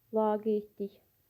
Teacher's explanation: Vurğu və uzanan sait eyni hecada deyil. Laqeydlik də vurğu sondadır. Laqeydlik. La uzanır və bəli, uzanma birinci hecadadır, vurğu sonuncu hecada fərqlidir.